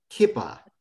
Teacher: kippah which is a shortening of that first vowel